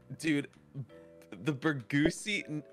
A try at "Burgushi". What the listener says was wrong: No, there's an H there.